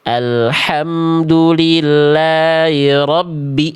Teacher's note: Karena bacaannya tidak jelas. Alhamdulillahirabbi h-nya enggak jelas. Dia khofa dia samar ya. · Haknya nggak jelas, dia khofa, dia samar.